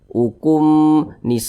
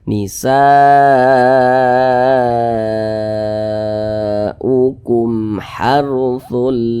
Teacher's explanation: karena dia izhar maka dibaca jelas tidak berdengung jadi ini dibaca pendek saja nisaukum harakum jangan dibaca ukumakum jangan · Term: izhar syafawi